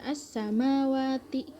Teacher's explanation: Alif lamnya ini hukumnya alif lam syamsiah karena alif lam bertemu dengan salah satu huruf syamsiah yaitu shin. Dalam hal ini alif lam seolah-olah hilang. Cara membacanya itu menghilangkan atau memasukkan alif lam.